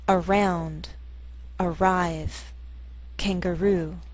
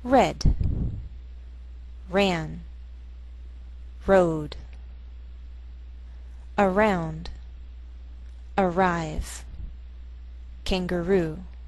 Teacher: the R sound begins a new syllable, so it doesn't blend with the preceding vowel